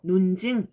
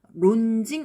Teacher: 단어 첫머리에 올 때는 르가 느로 바뀌어서 논증 이렇게 발음하죠. 론증 이렇게 발음하는 것보다 논증이 조금 더 발음이 쉬운 느낌이 들죠. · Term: 두음 법칙